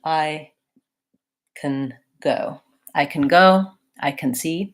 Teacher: or I can see I don't actually say the correct vowel I don't actually say the a vowel in can we have a tendency to reduce that and to say more of a schwa I can and so it sounds like I can go I